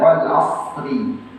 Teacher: Tapi tetap harus menebalkan shad dulu. Wal asr, tidak membaca wal as, ra-nya hilang.